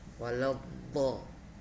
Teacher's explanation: Tepi lidah bersamaan dengan pinggiran gigi geraham atas.